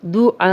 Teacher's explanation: دعا الف مدہ ہے، الف مدہ کے آگے حمزہ آ گیا ہے تو یہ 4 حرکات لمبا ہو گیا ہے